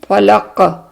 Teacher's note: فلق کیونکہ آخر میں ہے اور اس کا ساکن ہے، فلق، ہمارا قلقلہ بھی آتا ہے